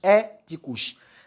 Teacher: Se nós percebemos na palavra éticos, o acento até já foi aí colocado. Então temos o acento na primeira sílaba. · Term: acento tônico